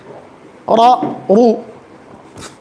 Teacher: را پر فتحہ ہے تو را کو موٹا پڑھیں گے